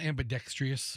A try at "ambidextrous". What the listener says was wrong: Well, first of all, it's not ambidextrous. Ambidextrous. No, you said ambidextrous. You added a whole new syllable to the word. No, there's no ambidextrous.